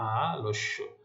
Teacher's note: নিয়ম অনুযায়ী ল মানে অ এর উচ্চারণ ও এর মতো হচ্ছে